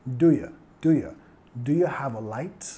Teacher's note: muchas veces reducimos el do ya, hasta que casi suena como una palabra